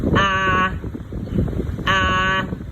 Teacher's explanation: the first tone is a flat tone. That's your highest voice. Ah, ah, that's your singing voice.